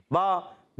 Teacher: با ادا ہوتا ہے دونوں ہونٹوں کے تر حصے سے